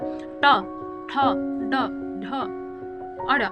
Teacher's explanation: यहाँ पे मुड़ जा रही है थोड़ा, ट, ठ, ड, ढ, अड़, मुड़ रही ना, नोक आपका थोड़ा मुड़ रहा है, इसके लिए क्या बोला, मूर्धन्य व्यंजन।